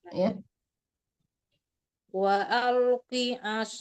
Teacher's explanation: Waqi as itu ya sama dengan mad arid sukun ya panjangnya sampai en harkat ya paling sedikit empat harkat jangan dua harkat